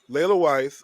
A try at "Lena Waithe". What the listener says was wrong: Lena Waithe. Her name is Lena, not Layla. yeah, it's Lena Waithe.